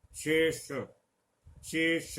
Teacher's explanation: मूर्धा में जाकर इस श के उच्चारण में जीभ जो है हमारी दांतों से ऊपर जाएगी